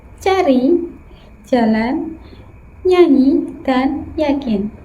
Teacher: dihasilkan ketika bagian tengah lidah mendekati langit-langit keras. Bunyi yang dihasilkan yaitu C, Cnya, dan Y. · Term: palatal